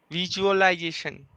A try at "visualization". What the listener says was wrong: It is Z. not G. It is Z.